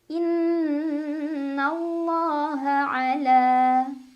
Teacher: La mad tabi'i karena ada fathah berdiri di atas lam jalalah, cara bacanya 2 harokat.